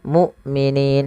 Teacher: hamzahnya harus dibaca dengan syiddah dan jahar, tidak ada nafas